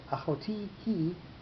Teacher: So we have a rule called nasog achor, pushed backwards. The note on achoti is pushed backwards by the next word he, and it goes on to the middle syllable in order to allow the word he to have its accent.